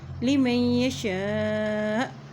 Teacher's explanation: وقف کرنے کی صورت میں ہمزہ ساکن ہو جائے گا اور جب ہمزہ ساکن ہوتا ہے تو وہاں پہ جھٹکا ادا کیا جاتا ہے